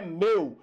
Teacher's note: esse ditongo não é aberto, tá? Esse ditongo ele é fechado